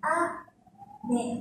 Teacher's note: chúng ta đọc cao độ của âm thanh từ cao xuống thấp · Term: trọng âm